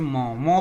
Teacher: मौ बोलते हैं तो आपका मुंह से भी हवा निकलती है और नाक से भी हवा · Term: अनुनासिक